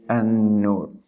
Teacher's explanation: So you pronounce the letter noon with haraka of fatha or fatha, and with stressed or emphasizing, and with ghunna.